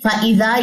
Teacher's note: فَإِذَا، یہاں پہ بھی مد منفصل ہے، مد منفصل کیا کریں گے، ذرا اس کو ریز کر دوں یہاں سے کیونکہ وہاں پہ میں نے لکھنا ہے. مد منفصل ہے، 4 سے 5 سیکنڈ اس کو لمبا کیجئے